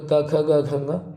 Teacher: क वर्ग कंठ कंठ्य है क्योंकि गले से ये जो हमारे गले से इनको बोला जा रहा है